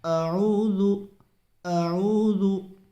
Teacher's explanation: شروع میں اعوذ باللہ کے حمزہ ہے اور بعد میں عین کی آواز نکالنی ہے